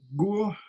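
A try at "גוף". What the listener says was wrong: Goof with a final fe at the end. Goof.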